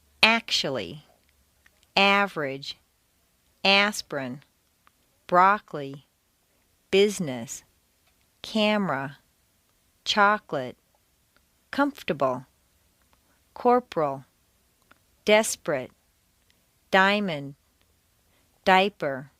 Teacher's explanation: syllables intonation can also completely get rid of certain entire syllables some longer words that are stressed on the first syllable squeeze weak syllables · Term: squeezed out syllables